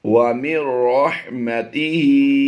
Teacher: नून को हमने साइलेंट करते हुए रा की आवाज़ को मीम से मिलाना है। मीम नून रा ज़ेर मिर।